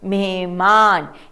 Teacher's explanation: यहां पर ह की ध्वनि थोड़ी कम है। इसका अर्थ यह नहीं कि हम ह नहीं बोलेंगे या हम ह नहीं लिखेंगे।